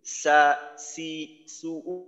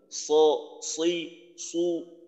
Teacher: সিনের উচ্চারণ যখন আমরা করব, তখন উপরের দাঁতকে নিচের দাঁতের সাথে মিলিয়ে দেব। সা, সি, সু, উপরের দাঁত নিচের দাঁতের সাথে লাগাই উচ্চারণ করব।